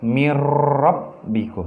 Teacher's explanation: Nun matinya hilang atau tidak dibaca tetapi masuk ke dalam rok